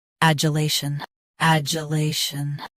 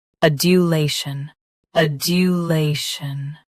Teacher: US uses J. UK uses due. Don't blur that middle sound.